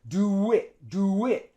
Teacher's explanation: The vowel oo and I, they're two vowels. So we link them by putting a W sound.